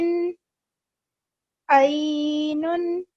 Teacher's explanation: the sound comes from the middle of the throat and it's different from alif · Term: Ain